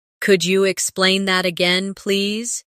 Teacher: Could you sounds like could ya, naturally.